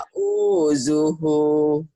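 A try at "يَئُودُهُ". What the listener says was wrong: Bagus, tapi dalnya keras ya. Keras ya. Dalnya keras. kan U-nya panjang Bu ini.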